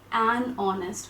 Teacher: So the H here is always silent. So we get this O sound in the beginning, which is a vowel sound.